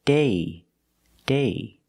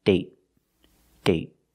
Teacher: So with date, we see the vowel is shorter because you have a stop T at the end.